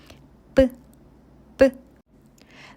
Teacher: The first one is tense consonant of b which is sound b is made by pressing the lips together tightly then releasing them strongly